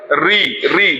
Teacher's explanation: जीभ ऊपर जा रही है, मुड़ रही है, री, री मूर्धन्य हो रहा है, री।